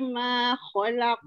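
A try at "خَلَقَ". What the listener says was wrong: Khalaq. Jangan muncung kha. Buka je. Kha. Buka mulut dua jari. Jangan muncung. Kha. Khalaq. Lam nipih.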